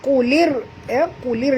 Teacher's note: masukkan bunyi lam terus ke dalam ra disertai dengan tekan ataupun jud. Kena di atas ra ada tasydid. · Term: idgham syamsi